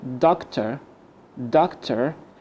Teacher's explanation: We can replace the OR and ER with schwa.